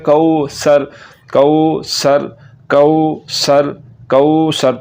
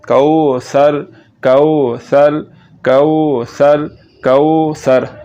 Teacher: تو سین کو پڑھتے ہوئے سیٹی کی آواز نکل رہی ہے، سیٹی کی آواز آپ نے نہیں نکالنی اور پڑھنا ہے کو سر کو سر کو سر کو سر، یہ لفظ ٹھیک ہے۔